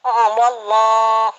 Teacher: Kalau wallah di sini panjang, tebal karena sebelum lafaz Allahnya berbaris wawunya berbaris fathah. Jadi kita baca tebal.